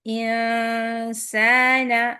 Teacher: انسان، اخفا لائٹ ہے، اخفا میں نون کے بعد سین ہے، جب نون کے مخرج کو نہیں ٹچ کریں گے، لیکن اس میں جو تھوڑی سی غنے کی صفت ہے وہ آتی ہی رہے گی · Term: لائٹ اخفا